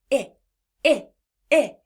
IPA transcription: ĭ